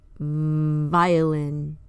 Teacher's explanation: is voiced the top front teeth are on the bottom lip the forced air will vibrate the lower lip